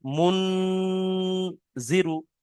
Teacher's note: এই নুন সাকিনের আওয়াজকে নাকে তুলে 1 আলিফ পরিমাণ গুন্না করে পড়তে হবে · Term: ইকফা